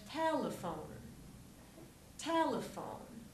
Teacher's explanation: syllables te phone the E on the end is silent and the stress is in the first syllable on T so we'll have a clear e for the first · what's again most important is that the second e gets reduced so we have telephone telephone T not T it's not tone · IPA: e ə ou